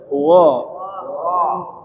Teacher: Takhim itu bunyi mirip O tapi bukan O ya. Jadi O seperti o kemudian o kitaim ketika mati itu harus tetap nampak sifat tafkhimnya tebalnya.